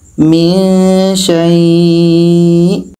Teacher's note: Kita panjangkan dekat syai-nya, baru matikan hamzah. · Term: mad lain